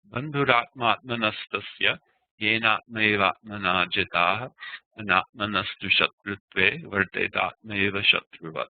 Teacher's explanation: I'm not stressing any of the syllables. It's a simple flow. Some of the syllables are simply twice as long as others.